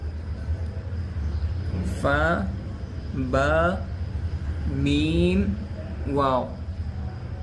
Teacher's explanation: یہ حروف ہونٹوں سے ادا ہوتے ہیں